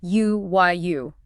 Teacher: the physical sound your mouth makes starts with a hard consonant glide